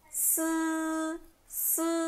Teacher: E SI já é sem chiado e a letra I é mais fechada